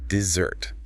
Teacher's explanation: dessert, the sweet cake, shifts the stress to the second syllable